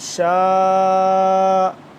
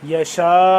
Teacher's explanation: مد کتنی لمبی ہوتی ہے، 4 سے 5 الف کے برابر